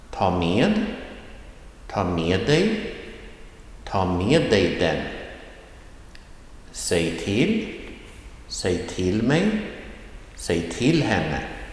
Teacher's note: phrases with the rising tone in the second syllable